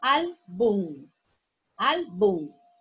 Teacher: La sílaba tónica es al.